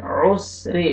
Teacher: را کو باریک کر کے پڑھیں گے، را کے نیچے زیر ہے، جب بھی را کے اوپر زبر پیش آتا ہے را کو موٹا کر کے پڑھیں گے، زیر آئے گا را کو باریک کر کے پڑھیں گے.